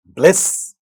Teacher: you have a cluster of ba and la in the beginning of the word